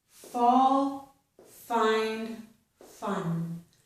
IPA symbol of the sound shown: f